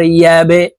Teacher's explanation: বা কলকলার হরফ নিচের দিকে ধাবিত করে ধাক্কা দিয়ে উচ্চারণ করতে হবে